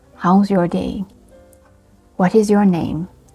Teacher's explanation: You see, so your voice fall at the end. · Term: falling intonation